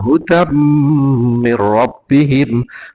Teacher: nun mati bertemu ro itu idgham bighunah walaupun tidak sejenis makanya rnya e agak agak panjang